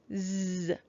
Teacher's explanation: apostrophe s is going to be making its voiced sound. So I'm going to draw a voice line through it to remind me that it's going to go z.